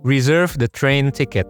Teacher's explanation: Pronounce E here with the vowel as in it and did. Your lips and tongue should be pretty relaxed.